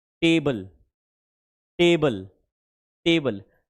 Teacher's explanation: जब आप टेबल बोलते हो ना तो आपकी जो टंग है वह एक्चुअली में बच्चे आपके मसूड़े को टच करती है।